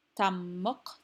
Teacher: both of those syllables are stressed they are both mono syllabic feet